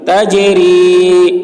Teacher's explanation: جیم میں قلقلہ یعنی جیم کی آواز ٹکرائے گی، ڈبل نکلے گی